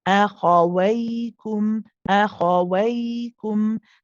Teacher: You can keep it running and then go on to the light kaf. Remember, this kaf is from where the hard and the soft palate are meeting. You don't want to be saying qum أخويكم qum qum.